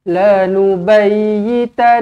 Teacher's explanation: okey Billahi lubayyitannahu dekat ya ni kita tekankan lebih sedikit kemudian Nun kena dengungkan dua harakat wajibul gunah hu dua harakat sebab ada wau kecil di sini la nuayitanahu